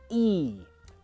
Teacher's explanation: When I do the E sound, the back of my tongue, this area, goes up, it's raised and tense. The sides of my tongue match the sides of my teeth, it's tense and raised. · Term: long E sound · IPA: /i:/